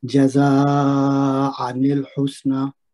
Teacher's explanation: یہاں پہ مد واجب بنے گی، جس کو 3 سے 5 حرکت لمبا کر کے پڑھیں گے